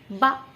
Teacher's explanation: बा बोल के दिखाओ, बा, होठों का यूज हुआ, बा हुआ ना, तो ओष्ठ ध्वनि हो गई।